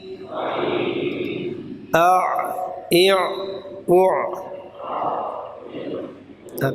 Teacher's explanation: پہلے حمزہ کی آواز آئے گی، پھر عین کی طرف وہ مائل ہو جائے گی وسط حلق کی طرف